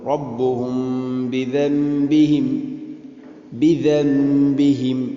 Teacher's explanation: فعقروها فدمدم عليهم ربهم بذنبهم فسواها فدمدم عليهم ربهم بذنبهم ربهم ഇവിടെ ഇഖ്ഫാ ശഫവി എന്ന ഗുന്ന അത് ചെയ്യണം. ചുണ്ടിലൂടെ അവ്യക്തമാക്കി മണിക്കുന്ന രൂപം